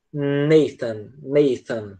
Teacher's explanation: com o TH a gente tem um som do teta, que ficaria Nathan, Nathan, tá? Essa língua entre os dentes.